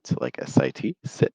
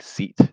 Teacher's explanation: the short I sound or I versus the e sound or E which is probably what you have in your first language